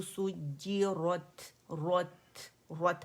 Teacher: ये मुफ़ख़्ख़म है रॉ, and ता मुरक्कक है, तो इस वजह से आपने उसे बारीक पढ़ना है